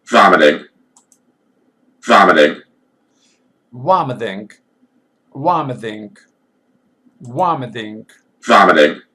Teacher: They write t, not d, but they pronounce d.